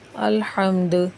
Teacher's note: دال پہ قلقلہ کریں گے وقف کی صورت میں، حروف قلقلہ میں سے اور ساکن ہو رہی ہے۔